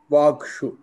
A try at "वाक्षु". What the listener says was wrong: सो excellent अति उत्तम